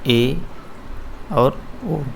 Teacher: और इसके बाद देखो अर्ध समृत पे बात करते हैं, जिसमें मुंह क्या आधा क्लोज हो। अर्ध समृत पे बात करते हैं जिसमें मुख क्या आधा क्लोज हो।